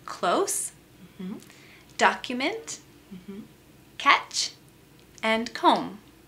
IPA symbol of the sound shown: k